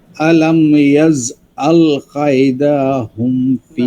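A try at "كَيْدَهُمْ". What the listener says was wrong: না, কায়দাতে কায়দাতে টানা হবে না, কালকে বলছিলাম মনে আছে কি না, কাইদাহুম।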